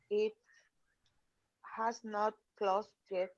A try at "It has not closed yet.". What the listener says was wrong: Okay, good. Or hasn't.